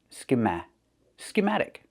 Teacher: Put the stress on the second syllable